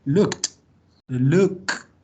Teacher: Estos son los dos sonidos finales que se tienen que escuchar. La K pronunciada aquí atrás, en la garganta, y la T en la punta de la lengua, en medio de los dos dientes.